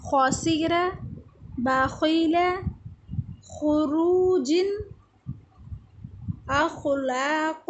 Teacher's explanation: خا بھی ادا ہوتا ہے حلق کے شروع والے حصے سے